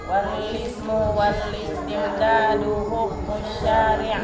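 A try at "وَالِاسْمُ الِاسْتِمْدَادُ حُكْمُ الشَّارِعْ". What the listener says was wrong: Nah, sebelum al-istimdad enggak ada wawunya. Wal ismu listimdadu hukmu syari'. Wal ismu listimdadu hukmu syari'.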